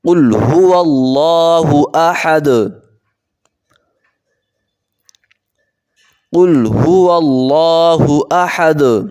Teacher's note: بسم اللہ الرحمن الرحیم، قل هو اللہ احد، قاف کو موٹا کریں گے، قل هو اللہ احد۔ ابھی لفظ اللہ موٹا ہوگا کیونکہ اس سے پہلے زبر آئی ہے۔ زبر یا پیش آ جائے تو موٹا ہوگا، اگر زیر آ جائے تو باریک ہوگا۔